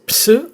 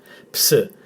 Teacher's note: So we've got the pronunciation of the first letter as ps, not s, ps. The p has to be pronounced as well as the s.